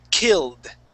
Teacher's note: Now, if a word ends with an L, okay, or the L sound, all right, the ED will sound like a D, and we would skip over that E sound